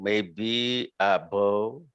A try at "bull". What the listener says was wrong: Now this pronunciation is not ball. It's not ball. It's bull. Bull.